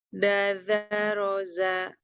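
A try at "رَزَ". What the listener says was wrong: Ini zanya masih ada hamzanya. Roza.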